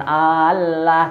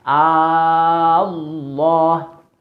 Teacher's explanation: Nah lafadz Allah nya itu tentu lafadz tafkhim